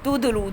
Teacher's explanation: تدلوا دال کے اندر کلکلا ہے